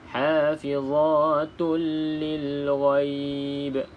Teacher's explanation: Tak bolehlah dengung jadi dia tidak boleh dengung maka kita baca dengan Idgham iaitu masuk ke dalam huruf lam